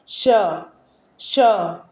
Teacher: आप श बोलेंगे तो आपका जीभ जाके तालू में सट रहा है यानी ये तालू से बोला जा रहा है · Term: उष्म व्यंजन